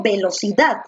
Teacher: donde la mayor fuerza de voz recae en dat.